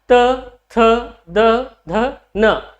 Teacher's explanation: जो आपकी जीभ है ना, ये ऊपर वाले दांतों को टच करेगी